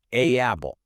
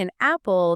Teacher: You have to close your vocal cords to separate those two vowel sounds. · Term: glottle stop